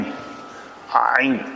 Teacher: پھر عین کے لیے فوراً اقصی حلق پہ جانا پڑتا ہے جو حروف حلقی ہیں ہمارے، حمزہ ہا، عین ہا، غین خا. تو عین ہا جو ہے وہ وسط حلق سے ادا ہوتا ہے